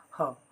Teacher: ह को स्वर यंत्र मुखी या फिर काकल्य भी कहा जाता है